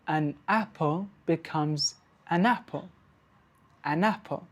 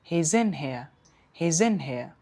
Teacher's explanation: So that is linking connecting the last consonant sound of one word to the vowel sound that begins the next word.